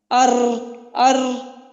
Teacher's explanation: زبان کا جو پشت ہے وہ جب ثنایا اور رباعی کے مشہوروں سے لگے تو را ادا ہوتی ہے. اب اس میں انیاب بھی نکل گیا را میں، اس میں صرف ثنایا اور رباعی استعمال ہوتے ہیں.